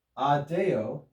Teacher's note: because the preposition is followed by a word that begins with a consonant the consonant b is dropped off of the preposition just to make it easier to pronounce